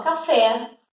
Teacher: eu sei que a sílaba tônica, a sílaba mais forte, é o fé. Portanto, última sílaba mais forte é oxítona, então café é oxítona.